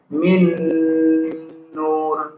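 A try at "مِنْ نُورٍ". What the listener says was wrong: Ini huruf ro nih, didahului domah maka tebal. Min nur. Begini Pak caranya. Min nur. Nur. Jadi jangan nur. Nur. Jadi dia tebal gitu Pak. Min nur. Jadi suaranya ngumpul di dalam. Itu yang dikatakan tafkhim ya.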